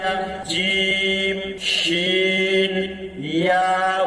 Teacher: 6 number মাখরাজ, 6 number মাখরাজ, জিহ্বার মধ্যখান, জিহ্বার মধ্যখান তার বরাবর উপরে তালুর সাথে, তার বরাবর উপরের তালুর সাথে লাগাইয়া জিম শিন ইয়া উচ্চারিত হয়।